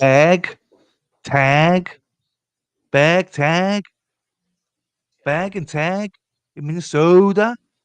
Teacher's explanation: any word beginning with AG, just bag or tag, will have a long A attached to it